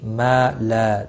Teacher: ما لا دونوں الف مدہ ہیں ایک ایک الف کے برابر کھینچ کر پڑھنا ہے